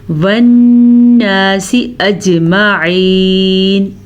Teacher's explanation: نون کا غنہ ادا کرنا ہے، نون پہ شد ہے، جیم پہ کلکلا کرنا ہے، کیونکہ جیم حروف کلکلا میں سے ہے اور جیم کے اوپر جزم ہے، اسی وجہ سے اجمعین کے بجائے ہم اس کو پڑھیں گے اج، ٹھیک ہے، اجمعین۔